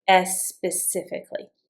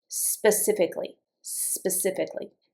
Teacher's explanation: Specifically, specifically, specifically now, if you are a Spanish or even a Portuguese speaker, make sure that when you pronounce this, this is going to be really hard for you. Don't put an e on the front.